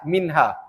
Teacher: Minha kita tak dengung 2 harakat kan? Sebab apa hukumnya? Izhar halqi kan? Nun ada tanda mati.